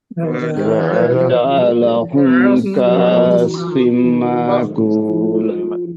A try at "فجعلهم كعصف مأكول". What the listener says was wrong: كأسف نہیں بھائی، عین نکالیے. یہاں یہ جھٹکے والی الف کو ہم عربی میں حمزہ کہتے ہیں.